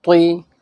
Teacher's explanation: زبان کی نوک کو اوپر کے جو ہمارے دو دانت ہیں ان کی جڑ میں لگاؤ تو یہ طا نکل جائے گا